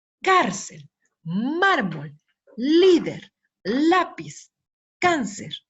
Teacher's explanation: todas estas palabras tienen su sílaba tónica en la penúltima sílaba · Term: palabras graves